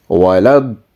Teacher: the da that has a big mud on it, so it will be prolonged as 3 alifs